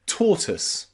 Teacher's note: Here, O and I is pronounced with a schwa sound, tortoise.